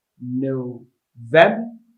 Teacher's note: The stress is on the second syllable, November. Vem is where the stress is.